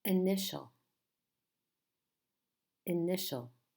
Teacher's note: which syllable is stressed which is the strong part initial initial it's the second syllable